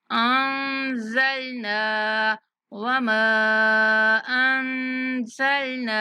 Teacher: نون کے بعد الف مدہ ہے اس لیے نون کو کھینچنا ہے